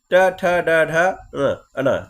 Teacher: इसका जब आप उच्चारण करेंगे तो आपकी जीभ आपके तालु से टकराएगी। आपकी जीभ आपके तालु से टकराएगी इनके उच्चारण करने में। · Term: मूर्धन्य व्यंजन